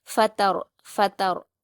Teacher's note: گا، فطر فطر، یاد رکھیے آپ کو طا نہیں پڑھنا ہے، تا کو باریک ہی پڑھیں گے لیکن را ساکن کو پور پڑھیں گے